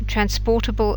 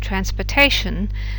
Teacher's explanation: The real difference here is that whereas the stress in transportable is on the por, it isn't in transportation